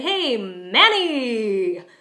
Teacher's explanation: But sometimes when I see him and I'm very excited, I might say, "Hey, Manny!" You could hear that I'm drawing out the second syllable of his name, but the stress is still on the first syllable.